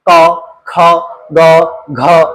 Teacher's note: अगर आप क वर्ग को ले लोगे तो इनको बोलते हुए सिर्फ कंठ का प्रयोग होगा। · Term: कंठ ध्वनियां